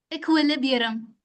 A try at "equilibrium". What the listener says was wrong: Librium, not liberum. Librium.